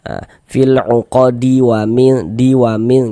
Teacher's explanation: Akan tetapi kalau misalkan nanti kita bacanya itu tidak berwakaf di huruf dal misalkan kita wasalkan nih e fil uqadi win di win gitu. Jadi huruf dalnya ya tetap hidup dan tidak terjadi qalqalah. E karena terjadinya qalqalah itu kalau hurufnya itu sukun saja huruf-huruf qalqalahnya itu gitu.